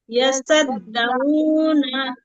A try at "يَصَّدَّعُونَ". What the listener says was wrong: ইয়াসদ, হ্যাঁ, তাসদীদ ওয়ালা হরফকে সবসময় দুইবার উচ্চারণ করতে হবে, ঠিক আছে? একবার যেন না হয়।